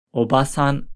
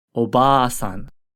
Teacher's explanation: vowel you would simply extend the vowel for an extra syllable see if you can hear the difference between a short ah and a long ah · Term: long vowel